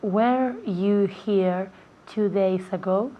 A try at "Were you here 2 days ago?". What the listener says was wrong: Perfect. Muy bien. Perfecto.